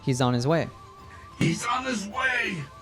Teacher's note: you'll sometimes hear natives drop the H sound when saying the pronouns his her her or him · sound when saying the pronouns his her her or him also there's a z sound from he's that gets linked to on · there's a z sound from he's that gets linked to on, so we hear he's on his way.